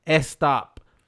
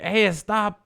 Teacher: I always hear people saying like "stop," like "Hey, stop the car, stop," So, so you meaning that they're taking an English word and putting an extra vowel in the front of it